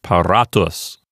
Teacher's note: So the accent will stay on the penult, and it sounds like paratus.